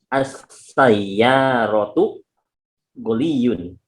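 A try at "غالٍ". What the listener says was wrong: Ghaliyun atau ghaliyun gitu mungkin maksudnya ya. Ghaliyun. Panjang ghainnya. Ghaliyun.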